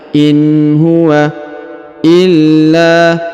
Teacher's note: huruf la ditahan dan ditekan lalu dipanjang dua harakat